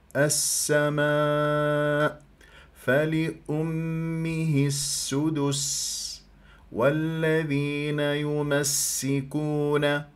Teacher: تسمع لي السين عندك سين ساكنه ثم بعد ذلك سين متحركه